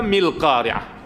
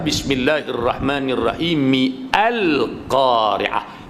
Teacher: a tu sudah tidak dibunyikan lagi kerana hamzah di situ adalah hamzah wasal, dia berjangkit dengan baris huruf yang sebelumnya.